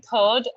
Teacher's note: In third, we don't really use the r sound. We say third and the r is not pronounced.